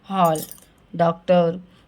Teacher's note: ये आ और ओ के बीच की ध्वनियाँ होती हैं, इसको बोलते हैं हम आगत ध्वनि, जो अंग्रेजी भाषा से हिंदी में आए शब्दों में प्रयोग करते हैं ना।